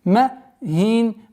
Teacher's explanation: при остановке танвин касра переходит в сукун, и долгота в размере двухогласовок фатх